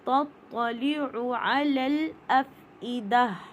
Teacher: تا لائٹ ہے لیکن تو ہیوی ہے